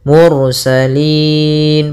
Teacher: ada ra tafkhim, ra tebal, ketika melafalkan huruf ra-nya kita tebalkan